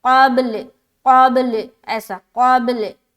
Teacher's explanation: मिन क़ब्ल, क़ब्ल, क़ाफ को जब बा से मिलाएंगे तो हमें कलकला भी करना है और लाम के ऊपर वक़्फ़ करेंगे, क़ब्ल, क़ब्ल, ऐसा क़ब्ल, ठीक है।